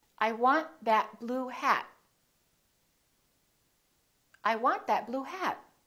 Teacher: you need to hold the t at the end to have a more american accent